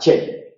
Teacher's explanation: Africado solamente hay una consonante que es la che, y es palatal